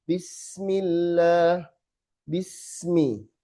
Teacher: Sepanjang bunyi sin harus ngalir terus sampai ke mim. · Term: rohwah